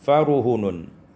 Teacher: dengan membuang alif sehingga kita baca faruhunun, ya, ra dan ha didommahkan, fara, ya, farihanun menjadi faruhunun.